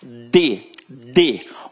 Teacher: Observa que a minha língua, ela encosta no dente